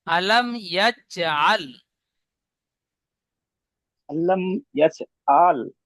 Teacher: আলাম বলে গুন্না করছেন, গুন্না হবে না। মিম সেকেন্ডের পরে বা মিম ছাড়া ইয়া এসেছে, তাই মিমকে বিনা গুন্নায় পড়তে হবে। একে ইজহার স্বাভাবিক বলে, ইজহার স্বাভাবিক গুন্না হয় না।